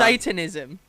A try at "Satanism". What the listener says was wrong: Satanism. Say it right. Saintanism? Satanism. I thought you said Saintanism.